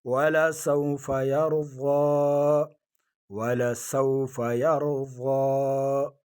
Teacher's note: وَلَسَوْفَ يَرْضَى وَلَسَوْفَ يَرْضَى، ولسو واویلین نرمی کے ساتھ، ولسوف یر را کو پر پڑھیں گے، را ساکن آگے زبر ہے، یرضا ایک الف کی مقدار، اس کو بھی کھینچیں گے